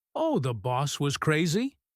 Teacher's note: She stretches out crazy and drops her voice. She is echoing him to show that she does not think the boss was actually crazy. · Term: sarcasm